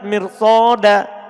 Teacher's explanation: Kalimat mirsoda ini ro-nya dibaca tebal. Padahal dia setelah kasro asli.